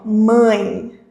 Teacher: Perceba que o som dá uma nasalizada, ele passa pelo nosso nariz também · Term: ditongo nasal